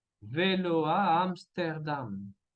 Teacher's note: tenemos enchaînement vocalique de O, A y después otra vez la A